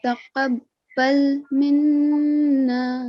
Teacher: Yes, we need to stress because of tashdid, but we also need to do a nasal sound. So hold the sound, okay, for 2 seconds.